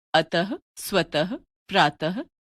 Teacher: विसर्ग का उच्चारण ह व्यंजन के रूप में किया जाता है।